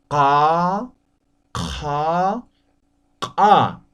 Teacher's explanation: Ahora postvelar, desde la garganta, no olviden.